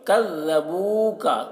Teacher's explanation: کذبوک، کاف کو باریک پڑھنا ہے، ذال کو بھی باریک پڑھنا ہے۔ بو میں واو مدہ ہے، اسے ایک الف کے برابر کھینچ کر پڑھیں گے